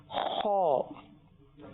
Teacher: موٹا موٹا کر کے پڑھنا ہے, لیکن ہماری آواز جو ہے وہ خرخراٹی والی نہ نکلے. جی, کھرکھراٹ والی نہ نکلے, کیونکہ حلق سے نکلتا ہے نا. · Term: پر